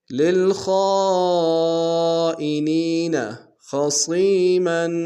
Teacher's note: خاء کو موٹا ادا کریں گے، صاد کو موٹا ادا کرتے یا کے سامنے آئیں گے، یا مدہ کے دال میں کھینچیں گے، میم کو بترمینہ غنہ کریں گے۔